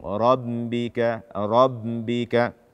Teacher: membaca ba tasydid dengan suara dari hidung